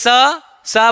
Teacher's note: स तो दांत से हो रहा है ये